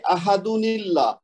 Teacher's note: احدن اللہ نہیں پڑھیں گے، ہم پڑھیں گے احدن اللہ، یعنی اس کے بعد اللہ کا جو حمزہ ہے وہ پڑھنے میں نہیں آئے گا، اور دال کو ہم ملائیں گے ڈائریکٹ لام میں، تو وہ تنوین کے ساتھ نہیں ملا سکتے.